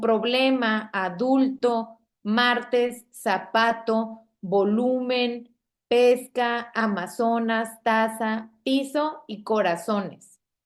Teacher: vean la ubicación de la sílaba tónica, ¿okay? Es la penúltima, es la penúltima sílaba. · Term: palabras graves